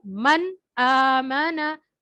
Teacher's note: नून को जाहिर करके पढ़ना है, उसको गुन्ना नहीं करना। जैसे मन, आमना, तो नून को जाहिर करना है। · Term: इजहार